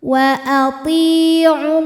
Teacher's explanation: Waw sukun didahului harokat dhammah maka panjang ainnya ini 2 harokat. Namun jika diteruskan gugur madnya, ainnya dibaca pendek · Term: takhallus bil hadfi